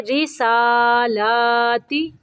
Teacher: را کے نیچے زیر ہے، را کو باریک پڑھیں گے